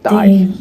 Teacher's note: It has a G at the end, although it was actually pronounced more like a Y. It was something like dai.